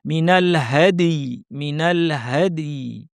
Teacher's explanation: দালে কলকলা এবং তারপর ইয়া সাকিন এভাবে থামতে হবে। মিনাল হাদি, মিনাল হাদি।